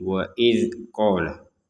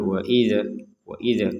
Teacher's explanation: Huruf zal sukunnya jangan dipantulkan. Jadi waid qala jangan waid waid.